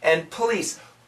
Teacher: when we say this word quickly, no, the N kills the D.